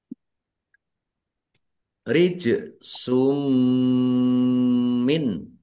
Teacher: jim sukun bacaan qalqalah dibaca memantul ya. Ditampakkan pantulannya.